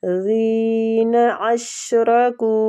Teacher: شین باریک ہے سیٹی کے ساتھ اور را فتح کی وجہ سے پور پڑا جائے گا.